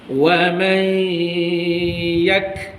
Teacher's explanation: nun kosong jumpa ya, idgham al-ghunnah, masukkan ke dalam ya dengan dengung